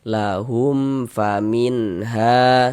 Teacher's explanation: jangan dibaca lahum dipanjangkan begitu, jangan, salah, pendek saja. Lahum famin ha, seperti itu. · Karena dia izhar maka dibaca jelas, tidak berdengung. Baca pendek saja. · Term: izhar syafawi